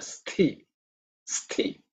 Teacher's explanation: The tha is again second letter in the tha varga. So it's an aspirated sound